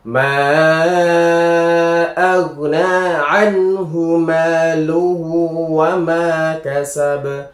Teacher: anhu ini juga dibaca jelas ketika nun sukun bertemu ha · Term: izhar halq